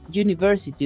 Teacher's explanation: usted ve observa una vocal pero su sonido es de consonante